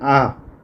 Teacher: तो देखिए म, ब और उ ये जो है ओष्ठ है, होंठ से इनका उच्चारण होता है, लेकिन आ ये कंठ से भी और जीभ के पीछे भाग से भी इसका उच्चारण होता है।